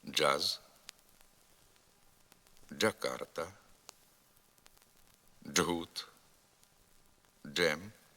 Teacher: звук Дж суцільний злитий приголосний твориться він точнісінько так як і звук ч тільки з участю голосу Порівняйте ці звуки ч Дж якщо вимовити звук Дж шепотом почуємо